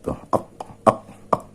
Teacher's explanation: dari perpaduan antara bagian lidah belakang dengan anak tekak ini melahirkan bunyi qaf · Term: dorso uvular